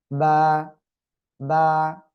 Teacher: এই যে দুই ঠোঁট, দুই ঠোঁটের ভিতরের অংশ বা ভিজা অংশ থেকে এই অক্ষরটি উচ্চারিত হবে। সিম্পল, দুই ঠোঁট বন্ধ রাখেন, এবার উচ্চারণ করতে হবে বা।